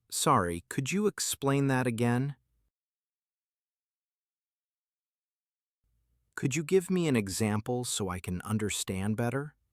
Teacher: Use a rising tone at the end because these are questions. Keep your speed slow and polite.